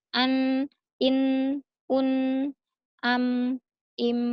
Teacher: kalau yang di rongga hidung agak kita lamakan karena agar dia masuk ke hidung. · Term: gunnah